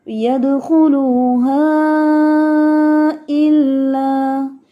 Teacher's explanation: مد منفصل کی مقدار جو ہے وہ ہے 2 الف. آپ 2 الف جتنا اس کو لمبا کریں گے